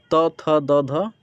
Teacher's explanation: ये जीभ के अगला वाला हिस्सा दांत पर स्पर्श करता है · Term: त वर्ग